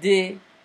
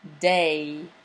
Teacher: You can repeat the sound e many times without moving your mouth at all. But when you pronounce the English word day, your mouth is relaxed and you actually say the two vowel sounds.